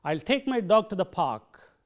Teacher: the stresses are on take dog and park · the other words like I'll, my, to, and the are weakened. They are not said in their full forms, but they are weakened.